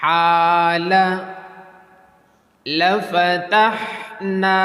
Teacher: Pronounce the Ha with thin and light voice.